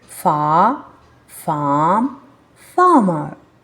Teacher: if you feel not comfortable with saying this R sound you can skip it as in the British accent